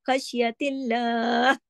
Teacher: हा की आवाज आपके गले में आना बहुत जरूरी है